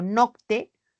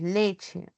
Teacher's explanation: el Grupo consonántico Latino o sea el latín ct cambia a una Che en el español